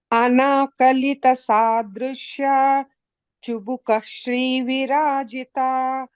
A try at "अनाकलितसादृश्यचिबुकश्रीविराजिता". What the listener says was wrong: Bhagini, no pause after Drishya.